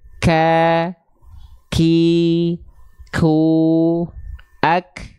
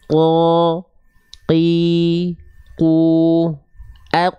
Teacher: yang menyentuh ke langit-langit yang keras jangan nanti jadi huruf Kaf kalau huruf Kaf dia ada percikan nafasnya · Untuk huruf Kaf kadarnya bukan mengalir tapi hanya berupa percikan nafas.